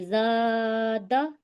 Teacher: تو الف مدہ ہو رہا ہے، زا کے پاس جو الف ہے وہاں الف مدہ ہو رہا ہے تو ہم کھینچیں گے